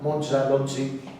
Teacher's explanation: africada palatal sonora, é un arcaísmo monumental